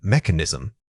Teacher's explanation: The initial unstressed syllable is quick and soft, almost blending in. The main effort should go into articulating that clear K sound.